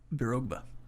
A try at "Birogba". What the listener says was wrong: You still don't emphasize the right syllable there.